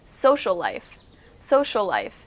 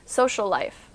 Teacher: If you hear between the end of social and the beginning of life, it almost sounds like you're saying two similar sounds.